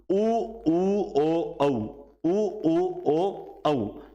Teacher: इन चार को जब हम बोलते हैं तो हमारा मुख जो है वो कैसा हो जाता है वो हो जाता है एकदम गोल · तो ये चार स्वरों को जब आप बोलोगे तो आपका जो कैसा हो गया, मुख गोल हो गया। तो ये सारे क्या हो गए, ओष्ठाकृति के आधार पर हो गए। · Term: वृत्तमुखी